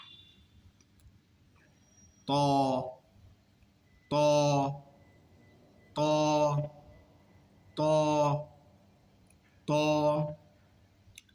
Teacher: এখন আরেকটি হরফ হবে একই স্থান থেকে, জিহ্বার আগা, দাঁতের গোড়া, তবে আওয়াজটা কি হবে? মোটা হবে, মোটা আওয়াজ হবে। যেমন, আর মুখ এদিক সেদিক করা যাবে না, মুখ থাকবে একেবারে নর্মাল অবস্থা।